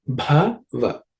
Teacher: This bha is again the fourth letter in the pa varga, has to be aspirated.